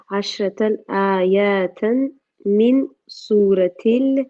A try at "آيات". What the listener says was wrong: not ayatan, not ayatan. There's no alif after the ya. Ayatan.